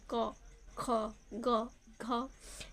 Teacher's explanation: तो कंठ। क वर्ग का उच्चारण जो होता है वो कंठ होता है